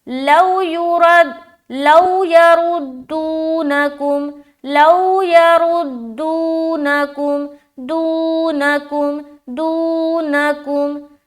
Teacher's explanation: दू में खींच रहे, नकुम में जल्द करेंगे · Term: واو مدہ